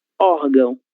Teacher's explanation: nós lemos ímã, sílaba tônica I, e nós lemos órgão, sílaba tônica OR